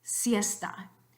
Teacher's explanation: in the alveolar fricative box, so across the top, alveolar, down the side, fricativa, you get this symbol s, siesta.